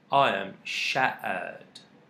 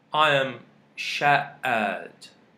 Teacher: If you won't say it like native speakers, you can say, I am shattered. Yeah, T is silent here. We call this in phonetics glottal T.